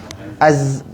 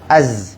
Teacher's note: makhraj huruf zai sejibik macam huruf sin, iaitu hujung lidah kita dekat belakang gigi bawah. Az. Oh, jadi sekarang kita dah tahu makhraj huruf zai, hujung lidah letak belakang gigi bawah.